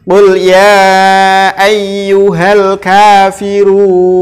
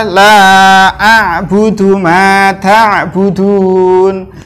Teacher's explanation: Yang keempat adalah hukum bacaan mad arid lisukun adalah awalnya dia itu adalah mad tabi'i karena dia jatuhnya di akhir kalimat, maka dia berubah menjadi hukum bacaan mad arid lisukun dibaca sampai 6 harokat.